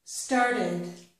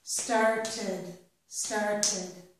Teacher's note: if I have the verb start, which ends in the sound t, when I add ED to it, that ED will sound like id or ed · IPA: /ɪd/